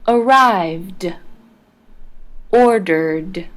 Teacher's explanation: the e d in arrived and ordered ended with a d sound